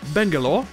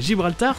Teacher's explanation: Sur Bangalore, c'est la première syllabe qui est accentuée, et sur Gibraltar, c'est la deuxième